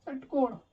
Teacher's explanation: जैसे षटकोण बोलते हैं वैसे ही जीभ आपकी श के वक्त, सा के वक्त मुड़ जा रही है